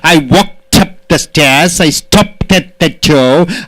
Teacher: K is unvoiced, P is unvoiced, SH is unvoiced, P is unvoiced. So T pronunciation should be given.